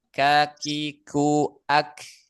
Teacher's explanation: huruf kaf pangkal lidah yang bertemu dengan langit-langit lunak dan keras